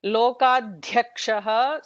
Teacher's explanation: it is dhya with a mahaprana dhya